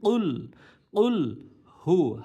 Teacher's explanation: কফ জিহ্বার গোড়া দাঁড় বরাবর উপরে তালুর সঙ্গে লাগিয়ে উচ্চারিত হবে, এই জন্য কুল কুল এমন একটা শব্দ হবে।